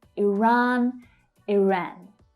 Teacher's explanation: So the second syllable is where the stress is. The vowel sound might be slightly different.